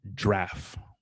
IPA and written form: dʒɻæf (giraffe)